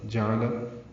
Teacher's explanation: جعل تینوں پر زبریں ہیں، جلدی پڑھیں گے، عین وسط حلق سے نکالیں گے۔